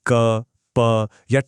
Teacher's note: बोलने में हवा को पूरी तरह रोककर एकदम से छोड़ा जाता है। इन्हें कहते हैं स्पर्श व्यंजन।